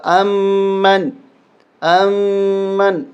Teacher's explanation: میم پہ غنہ ہوگا، نون پہ نہیں ہوگا